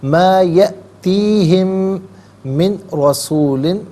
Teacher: وَمَا یَأْتِی، یہاں پر آپ دیکھیں حمزہ ہے، اسے جھٹکے کے ساتھ پڑھا جائے گا، یأتی، وما یأتیہم من رسول، ہم میں آپ دیکھیں میم ساکن ہے، اسے من کی میم کے ساتھ ملا کر میم کی آواز کو غننے کے ساتھ ادا کریں گے